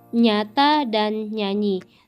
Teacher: bertidal yang bercirikan hidup, nasal, dan laminopalatal.